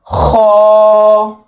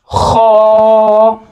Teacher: खो को मुंह गोल करके इसको पढ़ेंगे हम और मोटा पढ़ेंगे